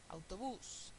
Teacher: palabra aguda el estrés está en la última sílaba